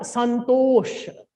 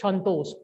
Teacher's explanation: we think that we can pronounce dental sa very particularly, but we cannot. We speak, we write sa, but we pronounce sha, sha like that.